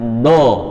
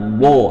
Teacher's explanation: Nah, jadi ingat, do menggunakan lidah bagian tepi nempel ke geraham dan dia berjalan tuh suaranya sampai ujung lidah. Do tidak menggunakan bibir, sehingga do pengucapannya nggak sampai bibir itu monyong maupun apalagi nempel